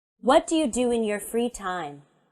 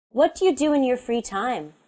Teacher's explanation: my voice goes down at the end of the question · in spoken English WH questions and answers have a falling intonation